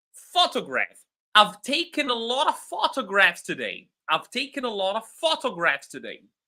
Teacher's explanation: The first syllable is stressed.